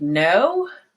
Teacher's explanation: the tongue right behind your teeth here hold it against so the tongue should be held against the ridge behind the teeth the top teeth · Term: n sound